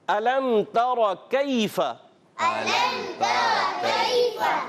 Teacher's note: میم ساکن کے بعد تا یا یہاں پر اظہار شفوی یعنی غنہ نہیں کریں گے